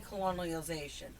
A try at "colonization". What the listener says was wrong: Colonization. With a couple extra syllables.